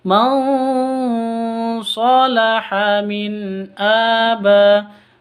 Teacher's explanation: nun mati bertemu dengan SH didengungkan siap-siap ke huruf shadnya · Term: ikhfa Hakiki